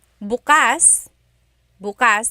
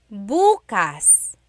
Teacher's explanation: the emphasis is on the second syllable that means open